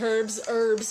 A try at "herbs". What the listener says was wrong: It's herbs. The H is silent.